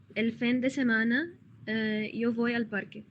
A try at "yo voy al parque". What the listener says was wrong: يو بوي مش فوي قلتي فوي